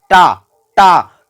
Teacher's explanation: टा कहते हैं तो आपका जीभ मुड़ता है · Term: मूर्धन्य